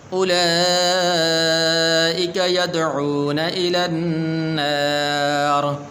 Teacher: حالت وقف کے اندر یہ را کو پھر پر کیا جائے گا۔